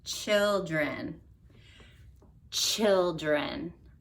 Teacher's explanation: T sound and then adding an SH to that so so your tongue is gonna act like it's making a tea and then you're gonna add a SH and when you put those together you get a CH sound